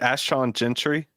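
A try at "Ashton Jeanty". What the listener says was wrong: That is mispronounced, but correct. We put an R in there for no particular reason, but 3 points.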